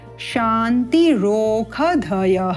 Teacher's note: श का उच्चारण ख के रूप में होगा माधिनी शाखा के नियमों के अनुसार शांति रोख धय शांति ही